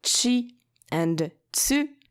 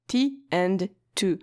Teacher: the T sound becomes Chi and TSU and not TI and Tu